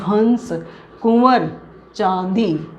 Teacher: मुंह और नाक दोनों से आवाज आती है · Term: अनुनासिक